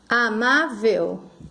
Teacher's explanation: É a penúltima que é forte. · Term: sílaba forte